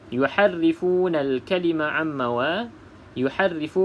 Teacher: Okey, sebab ha ni ada dua jenis. Satu ha yang pedas, satu lagi ha biasa. Kedua-duanya keluar daripada makhraj halkom ataupun kerongkong.